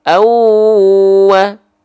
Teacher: Contoh, kalau ada fathatain berjumpa dengan huruf waw, maka nggak dibaca anwa, tapi si bunyi an-nya dimasukkan ke waw. Jadi dibacanya awwa. Begitu. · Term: idgham